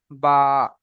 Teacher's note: দুই ঠোঁটের ভিজে অংশ মিলিত হয়ে উচ্চারণিত হয় বা